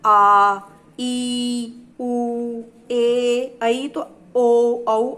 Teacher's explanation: दीर्घ इन स्वरों के उच्चारण में हरिस्व स्वरों से दोगुना समय लगता है, यानी कि 2 मात्रा का समय लगता है। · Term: दीर्घ स्वर